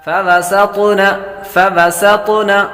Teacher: سین حروف صفیرہ میں سے سیٹی کی آواز آئے گی، طا حروف مصالح میں سے بھی ہے اور قلقلہ میں سے بھی ہے تو یہاں پر قلقلہ کریں گے۔